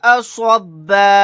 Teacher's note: आयत करने की सूरत में बा अलिफ के साथ एक जबर को पढ़ेंगे, दो जबर नहीं पढ़े जाएंगे